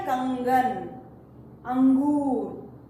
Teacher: अनुस्वार लगाने से आप जब उसका उच्चारण करते हैं हमको हवा नाक से निकलती है